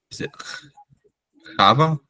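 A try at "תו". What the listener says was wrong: Tav. Yeah, no A at the end, so just Tav. T-A-V. No, T as in Tom.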